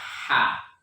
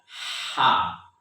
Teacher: ya keluar dia dari tengah tenggorokan kita